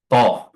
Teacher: dia tidak memiliki sifat hams ya. Jadi dia ee nafas itu tertahan. Jadi jangan sampai dia mengeluarkan udara atau angin th. Dan di sini dia berharakat kasrah ya. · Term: huruf tha